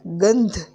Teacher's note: ગ ઉપર અનુસ્વર છે એના પછી ધ ધજા નો ધ છે એ જે અહીંયા ન અનુનાસિક વાળી લાઈનમાં છે એટલે આપણે ગંધ એમ કહીએ છીએ તો આવી રીતે આ બધો